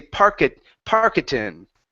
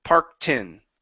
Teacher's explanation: Okay, so you're removing that vowel. So the tricky part here for you is ending on a K sound without saying parka. Okay, and just saying parktin.